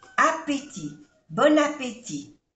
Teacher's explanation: No se pronuncia la T final.